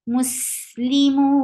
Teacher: You are applying mad arid lisukun because this is a temporary sukun. Before temporary sukun, you find mud letter. This mud letter will be converted into 4 counts long now.